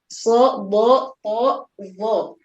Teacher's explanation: Di situ diturunkan 4 berarti sisanya 3 di isti'la yang tidak masuk ke dalam al-itbaq. Itbaq hurufnya lebih tebal dibanding huruf-huruf yang ada di isti'la yang lainnya.